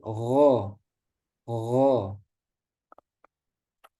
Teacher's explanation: rasakan juga pangkal lidahnya naik tebal bukan gha gha tapi gho gho ya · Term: gain